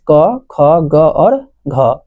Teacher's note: उच्चारण स्थान होता है कंठ अर्थात क वर्ग का चार अक्षर क वर्ग का प्रथम चार अक्षर जो है क ख ग घ यह होता है कंठ से